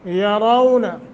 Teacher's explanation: यरौन रा को पुर करना है। वो साकिन माक़बल फ़तह है, ये भी हरूफ लीन में से नरमी के साथ 1 सेकंड की मद भी होगी।